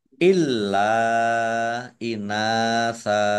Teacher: Lamnya dibaca double, ada tasdidnya. Lam fathah alif mat tabi'i, tetapi karena bertemu dengan huruf alif di kata yang berbeda, maka menjadi mat jais munfasil.